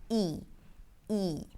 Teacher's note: The tongue rolls forward and the lips pull to the sides a bit. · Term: tense E